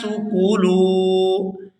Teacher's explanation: لام کو واو ساکن کے ساتھ ملائیں گے تو کھینچ کر ادا کریں گے